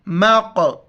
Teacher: ولو شاء اللہ مق، میم کو قاف کے ساتھ ملائیں گے اور جھٹکے کے ساتھ پڑھیں گے، قاف کو موٹا کرنا ہے